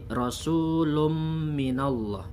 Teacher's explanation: atau ya maka ini dibaca dengung dua harokat Rasul ombin Allah bunyi tanwin dimasukkan ke huruf mim dan didengungkan selama 2 harakat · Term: Idgham Bighunnah, idgham bigunnah